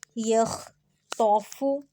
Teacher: یخطف یہ تا نہیں ہے، تو ہے، تو پہ آواز موٹی ہوتی ہے